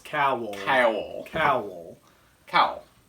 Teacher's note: I say it as almost 3 syllables.